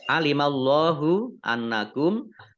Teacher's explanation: Allahnya dibaca tebal karena harokat di depannya fathah. Lam fathah berdiri mat tobi'i.